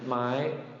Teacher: That would qualify as a short high tone, but in reality, it sounds more like a long high tone.